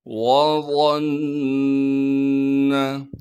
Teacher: وَقِيلَ مَنْ رَاقَ وَظَنَّ، واو کو بغیر کھینچے پڑھیں گے، وا کو موٹا کر کے پڑھنا ہے، وا کو آگے نون مشدد سے ملا دیں گے، نون مشدد پر جب ملائیں گے پھر نون مشدد پر غنہ کیا جائے گا